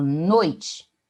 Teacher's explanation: eu tenho noi, o oi, que o O funciona como vogal e o I como semivogal. Então, nesse caso, eu tenho um ditongo decrescente.